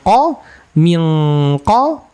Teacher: ikhfa untuk Q itu dengungnya tebal ya